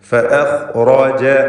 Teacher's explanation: ഫഅഖ്റജ ഖാഇനും റാഇനും മാത്രം തഫ്ഖീം.